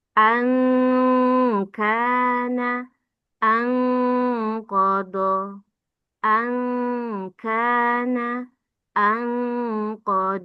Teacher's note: Nun ada samar-samar dengung. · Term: ikhfa adna